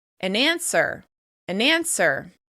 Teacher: the /n/ sound at the end of the article joins with the vowel sound at the beginning of the noun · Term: catenation